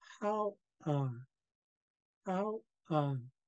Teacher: First, we have the tone mark right here. Then we have the glottal stop, which means a really slight pause. And then lastly, we have the double A or the long A, which is low tone.